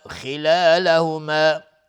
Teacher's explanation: خا از حروف استعلاء غلیظ تلفظ میشه